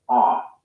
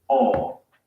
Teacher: the american o sound is an unrounded vowel ah while the british o sound is rounded all another example hot hot there's also the o diphthong in